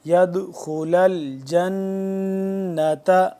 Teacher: جنت نون مشدد ہے تو یہاں پہ ہم کیا کریں گے، غنہ کریں گے